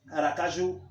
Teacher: o ju é a sílaba mais forte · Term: oxítonas, oxítona